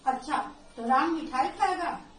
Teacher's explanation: इस वाक्य में मिठाई पर अतिरिक्त बल पड़ रहा है। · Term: बलाघात